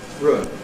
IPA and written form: rʊɪn (ruin)